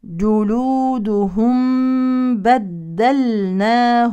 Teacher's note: ميم ساكنه يليها باء يعني اخفاء شفوي